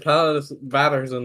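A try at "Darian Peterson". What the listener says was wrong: Peterson. There's no A in that name.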